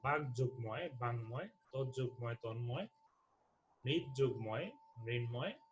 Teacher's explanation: এই অঘোষ অল্পপ্রাণ ধ্বনিগুলো হয় ঘোষ অল্পপ্রাণ ধ্বনি হবে অথবা এই ক্ষেত্রে নাসিক্য ধ্বনি হবে